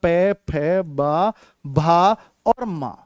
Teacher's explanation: कोई सा भी वर्ण आपका पै वर्ग का आपका बिना होठ मिलाए बोला ही नहीं जा सकता।